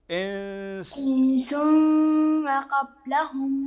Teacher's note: عندنا النون ساكنه وبعدها السين من حروف الاخفاء